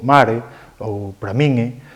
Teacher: Cando hai un contexto prosódico adecuado, sobre todo en final de enunciado, ou cando facemos unha suspensión, engadimos ese é paragóxico, especialmente cando a palabra é aguda e acaba en consoante